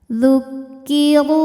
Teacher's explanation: Huruf roho dibunyikan secara tafkhim karena berbaris dhammah. Maka ro dibunyikan dengan tebal. Zukkiru ru dihukumi dengan mad thobi'i zohiri.